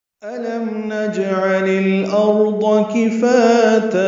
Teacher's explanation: نجعل جیم ساکن پہ قلقلہ · عین وسط حلق سے ادا کر · للارض میں لام ساکن پہ اظہار